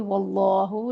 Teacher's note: واللہ لام اسم کو پر پڑھیں گے